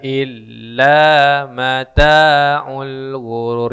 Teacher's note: Jangan illa mata, itu kepanjangan. Cukup dua harokat atau satu ayunan.